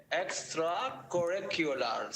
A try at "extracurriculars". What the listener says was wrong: slow that one down more on the r sound slow it down a lot because you're still making the Arabic r